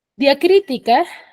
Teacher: diacrítica tiene cuatro sílabas y la mayor fuerza de voz está en cri que según su posición se encuentra en la antepenúltima sílaba en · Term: esdrújula